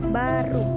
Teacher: Yang kedua ada bunyi B. Ciri-cirinya hidup, oral, bilabial, plosif